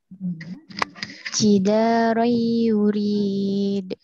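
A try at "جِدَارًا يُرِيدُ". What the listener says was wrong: Nah, ini kan gak ditahan, ya. Tahan. Jidarai yuridu.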